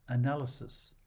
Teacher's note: Analysis is stressed on the second syllable, and so is its plural. The singular has a schwa at the end, analysis, and unvoiced s.